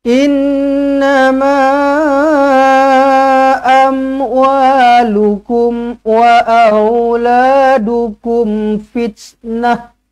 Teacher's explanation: mat jaiz munfasil 4 ataupun 5 harakat.